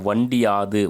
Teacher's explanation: உகரம் இகரமாக திரிந்து தன் மாத்திரை அளவில் குறைந்து ஒலிக்கும் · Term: குற்றியல் இகரம்